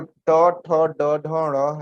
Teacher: ये जब ट बोल रहे हो तो आपकी जीभ जो है वह तालु से अत्यधिक पीछे चले जाती है, तो उसे मूर्धन्य कहते हैं।